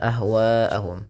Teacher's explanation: Wa dipanjangkan empat atau lima harakat dan tidak boleh dikurangi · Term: mad wajib muttasil